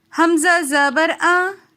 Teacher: حمزہ کو پڑھتے وقت ہم بغیر کھینچے اور بغیر جھٹکا دیے پڑھیں گے